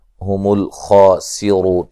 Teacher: خا کو موٹا ادا کریں گے اور را کو موٹا ادا کریں گے، واو مدہ ہے، وقفاً بڑی مد کے ساتھ پڑھ سکتے ہیں.